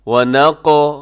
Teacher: وَنَقْ موٹا بھی ہے اور قلقلہ بھی کرنا ہے۔